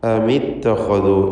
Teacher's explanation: ഇത്തഖദു എന്ന പദത്തിലെ ഖാഇൻ്റെ ഉച്ചാരണം തടിപ്പിച്ചുകൊണ്ട് സ്വരഭാരത്തോടെ ആയിരിക്കണം. കാരണം അത് ഇസ്തിഅലാഇൻ്റെ ഖുസ്സദഖ്തിൻ ഖിദ് എന്ന 7 ഹർഫുകളിൽപ്പെട്ട തഫ്ഖീം ചെയ്ത് തടിപ്പിച്ചുച്ചരിക്കേണ്ട അക്ഷരങ്ങളിൽപ്പെട്ടതാണ്.